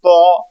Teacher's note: مخارج کے لیے ہم زبان کی جو نوک ہے اس کو اوپر والی دانتوں کی جڑوں میں لگائیں گے تو قا قا قا۔ اب چونکہ اس کو موٹا کرنا ہے تو سینے سے زور لگائیں گے قا۔ زبر کے لیے منہ کو کھول کر آواز اوپر کی طرف اٹھائیں گے تو لفظ قا زبر قا ادا ہوگا، قا زبر قا۔